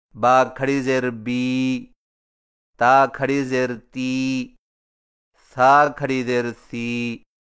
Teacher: تھوڑا سا کھینچ کر پڑھا جاتا ہے، اور اس کی آواز کا رخ نیچے کی طرف ہوتا ہے